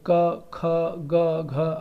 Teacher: वर्ग का उच्चारण कंठ से है जैसे क ख ग घ आप खुद ही बोल के देखेंगे तो कंठ यानी कि आपके गले के अंदर से आवाज आएगी और कहीं भी मुंह में कहीं भी कुछ स्पर्श नहीं होगा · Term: क वर्ग